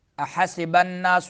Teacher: نون مشدد ہے، غنہ ہوگا، سین میں سیٹی نکالیں گے